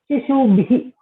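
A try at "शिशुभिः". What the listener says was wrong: Shishubihi. There is no dirgha. In the Bahuvachana, you are putting dirgha. Shishubihi.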